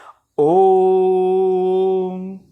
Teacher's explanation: 3 मात्रा का समय जो है इसके उच्चारण में लगता है, इसीलिए ये प्लुत स्वर त्रिमात्रिक है।